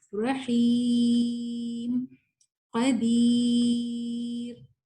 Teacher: یا سے پہلے زیر ہے، تو اس یا کو آپ جتنا مرضی کھینچ لیں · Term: یا مدیہ